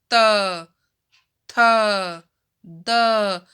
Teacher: हमारी जीभ जो है वो दांतों में टच हो रही है, यानी दांतों से टच हुए बगैर बोल ही नहीं पाएंगे, तो इनको दांतों का स्थान, उच्चारण स्थान दिया गया है। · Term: त वर्ग